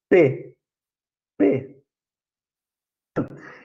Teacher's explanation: Eu puxei o ar e na hora de eliminar ele, eu fiz um obstáculo para produzir o som do P.